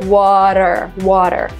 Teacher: when we say water, we don't even say T, we say R